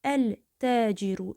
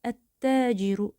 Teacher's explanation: Dil iki dəfə yuxarıya qalxıb aşağı enməsin deyə bu zaman şəmsi hərflə başlayan söz hansı ki təcr sözündə şəmsi hərflə başlayır. Lən burda oxunmayacaq və tənin içərisinə girəcək. Beləliklə tə şəddələnəcək, ikiləşəcək. ələciru yox, bunu ətəciru kimi oxuyacaıq.